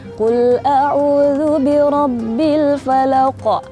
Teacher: Terus dia kalau ada kolkolah, sifatnya tuh kolkolah dipantul.